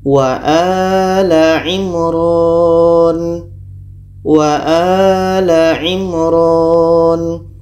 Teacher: mim mati bertemu ro ro adalah huruf Izhar Syafawi maka ini dibaca jelas mim jelas ro jelas